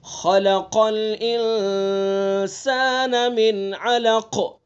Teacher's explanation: ٹھیک ہے، تو خا کو پر پڑھیں گے، قاف کو بھی پر پڑھیں گے، اور انسان میں غنہ کریں گے